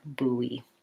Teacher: it actually sounds like boo e or boo boo E and there's kind of a little hidden W in between